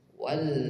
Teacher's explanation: wau langsung masuk ke lam sukun Wal kemudian setelahnya huruf Ain Wal Ain